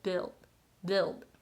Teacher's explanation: in the end you want to be able to move the back of the tongue just slightly up to create like L sound